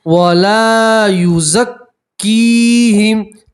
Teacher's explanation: کاف کے ساتھ یا مدہ اس لیے ایک الف کے برابر کھینچیں گے